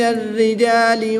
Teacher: الف اور لام یہ رسم الخط کے لحاظ سے لکھے گئے ہیں، ہم ان کو نہیں پڑھیں گے۔ را مشدد کے نیچے زیر ہے، تو اس لیے اس را کو باریک پڑھیں گے، پر نہیں پڑھیں گے۔ الف کو بھی باریک پڑھیں گے کیونکہ اس سے ما قبل حرف بھی باریک ہی پڑھا جائے گا، تو الف بھی باریک پڑھا جائے گا۔